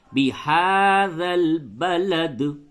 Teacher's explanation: ہا کے اوپر کھڑا زبر ہے تو اسے تھوڑا سا کھینچ کر کے پڑھیں گے، بهذا البلد۔